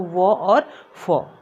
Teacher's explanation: दांत और ओष्ठ से दोनों से इनका उच्चारण स्थान निकालते हो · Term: दंतोष्ठ्य